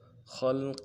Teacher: خا کو لام کے ساتھ ملانا ہے، خا کو موٹا کریں گے ، لام کے ساتھ ملائیں گے، قاف کے نیچے تنوین ہے،